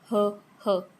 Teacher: root of tongue constricts the pharynx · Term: pharyngeal sounds